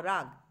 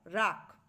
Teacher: শব্দটি কি হয়ে যায় আমাদের উচ্চারণে র আকার ক রাগ তাহলে গ হচ্ছে সঘোষ ব্যঞ্জন বা ঘোষ ব্যঞ্জন তাকে আমরা অঘোষ ব্যঞ্জন ক এর মত উচ্চারণ করছি